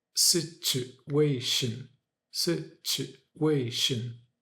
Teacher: when you have a t u a in the middle of a word, you say ch instead of t with the ch sound.